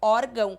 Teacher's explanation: e é sinal de nasalização só e somente para indicar que quando a gente pronuncia a palavra órgão o ar sai pelo nariz